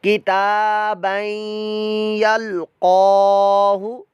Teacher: تا کھڑا زبر تا، یہ کھڑی زبر ہے کھڑی حرکات میں سے۔ با دو زبر بن، تنوین اور تنوین کے بعد آ گیا یا حروف یرملون میں سے، یہاں ادغام مع الغنہ کا قاعدہ، یعنی ہم غنہ کر کے پڑھیں گے۔ اور لام ساکن ہے، قاف کے اوپر کھڑا زبر ہے، لمبا کر کے پڑھیں گے۔